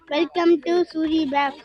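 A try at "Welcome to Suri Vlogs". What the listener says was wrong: பேக்ஸ் இல்லடா பேக் வீட்ல இருக்குடா ளாக்ஸ் சொல்லு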